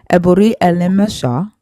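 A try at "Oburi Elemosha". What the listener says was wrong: You are mispronouncing the very first word, which is O. Oburi.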